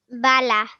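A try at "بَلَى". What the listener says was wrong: Excellent. Well done.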